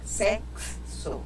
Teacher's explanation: o som do X aqui, na verdade, é KS